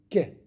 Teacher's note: Ka, c'est aussi le fond de la langue au contact du palais mou et dur.